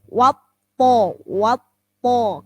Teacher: Wawu huruf tipis, kemudian toknya huruf tebal.